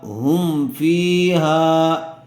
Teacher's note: فا آیا ہوا ہے، اس لیے میم کو ظاہر کر کے پڑھیں گے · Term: اظہار شفوی